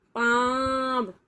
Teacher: अब मुंह खुल रहा है और नाक से भी आवाज आ रही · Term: अनुनासिक